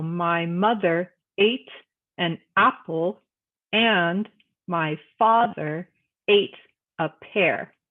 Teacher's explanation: the mother part of mother is said a little bit more strongly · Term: stressed